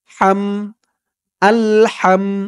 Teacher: হার আওয়াজটা গলার ভিতর থেকে চিকুন হয়ে বের হবে।